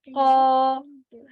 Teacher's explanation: So I stretch the sound for this فتحة, it's prolonged the sound for this فتحة, it's become ألف. When I stretch the sound for this فتحة, I get ألف مد.